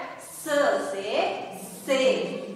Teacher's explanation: यानी हमारी जीभ और दांतों से जो हल्की सी हवा निकलती है, जो वायु निकलती है, उससे इस अक्षर का उच्चारण हम कर पाते हैं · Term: दंत व्यंजन